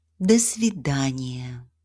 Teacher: The da is pronounced as if it is part of the next word.